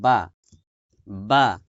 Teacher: এই দুই ঠোঁট থেকে এক মাখরাজে 3টে হরফ উচ্চারিত হয়। দুই ঠোঁটের ভেজা জায়গা হইতে